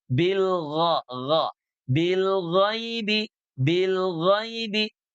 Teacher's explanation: Keluarnya dari belakang sini dari tenggorokan, ya, tenggorokan yang dekat dengan pangkal lidah. Nah, pangkal lidahnya terangkat juga ke atas ke langit-langit. Bilgha, makanya dia terdengar suaranya tebal ya, tafkhim karena punya sifat isti'ala. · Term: isti'la